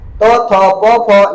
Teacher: इनके उच्चारण में केवल श्वास का योग होता है ना, इसलिए इसकी श्वास संज्ञा भी होती है ना। इनके उच्चारण के समय कंठ क्या होता है, खुला रहता है, और खुला होने के कारण इसलिए इन्हें क्या कहता है, विवार भी कहा जाता है। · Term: अघोष